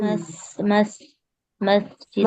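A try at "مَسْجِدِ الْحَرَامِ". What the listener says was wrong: हाँ जी, मस सीन पढ़ना। सीन की आवाज आए, सीटी तो जा में भी होती है, सीन की आवाज आए, ठीक है। तो इसका बहुत ख्याल रखना है।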